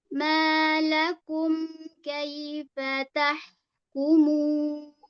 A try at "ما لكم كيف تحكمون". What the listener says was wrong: Malakum. Mimnya coba lagi diangkat. Malakum. Kaifa tahkumun.